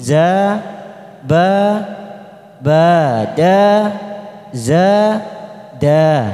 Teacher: Huruf-huruf yang diikuti alif ini kita panjangkan dua ketuk.